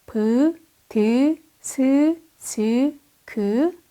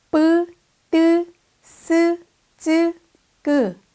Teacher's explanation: 실제 이 발음을 할 때 성대를 긴장해야 합니다. 그러나 입에서 나오는 공기는 비읍, 디귿, 시옷, 지읒, 기역보다는 덜 나옵니다. 다음은 미음, 니은, 이응 문자입니다. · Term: 센소리